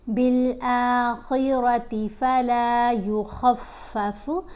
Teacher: خا اور را کی آوازوں کو موٹا پڑھیں گے